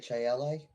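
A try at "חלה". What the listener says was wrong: I think there's a C or something in there too. If I recall, it's actually like got a guttural at the start, like challah or something.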